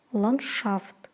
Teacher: Н-д-ш произносится как н-ш. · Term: непроизносимый согласный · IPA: [lanshaft]